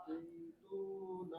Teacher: অর্থাৎ জেরের উচ্চারণ বাংলায় একার না রসিকার